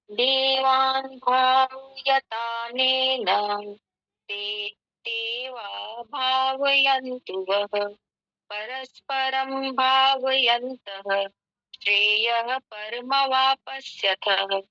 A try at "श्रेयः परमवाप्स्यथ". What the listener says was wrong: वापस्यथ नहीं है, पे बड़ा नहीं है, पे आधा है। श्रेयः परमवाप्स्यथ।